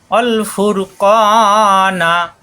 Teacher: ফুর ক জিব্বার গোড়া থেকে মোটা হবে